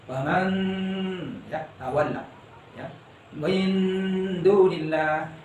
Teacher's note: Ditahan kira-kira 1,5 alif, artinya 3 harokat ya dengunnya itu ya, 1,5 alif atau 3 harokat ditahan. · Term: ikhfa